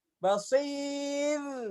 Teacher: Ustazah tipis ro-nya, jangan ditebalin, kan mau berhenti di situ kan?